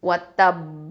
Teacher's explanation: நம்ம கல்கலத்துல் குப்ரா ரொம்ப அதிகமான கல்கலாக கொடுக்கணும்.